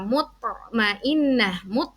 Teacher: di tengah Mutmainnah Mut huruf tho Nah ya dinamakan Qalqalah Sugra Qalqalah yang dibaca tidak terlalu kuat